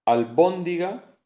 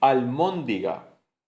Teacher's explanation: tanto la B como la M son bilaviales, sonidos bilaviales, solo que la B es oclusiva porque el sonido se construye y luego se expulsa y la M es nasal. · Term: asimilación